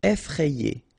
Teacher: remember, double F, so you open the E, so E, effrayé.